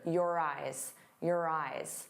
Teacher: the second word, instead of eyes, really sounds like rise because it has that R. But you have to say it together.